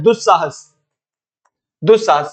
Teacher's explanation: उपसर्ग में जो हमेशा स निकलता है वो दंत स ही निकलता है।